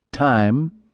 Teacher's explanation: a sharp T with a long moaning I